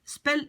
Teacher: L'accent est sur le E. C'est une voyelle courte, donc ça va être spelletje.